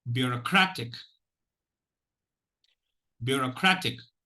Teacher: You will notice that the third syllable is stressed because I'm spending more time. We should spend more time on the third syllable, crat, in pronouncing that particular syllable, and more energy should be spent. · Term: primary stress